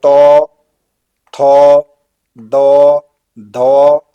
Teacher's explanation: दांत और जीभ के स्पर्श से बोले जाने वाले